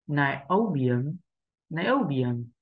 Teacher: Âm số 2 là âm được nhấn trọng âm và đây là âm O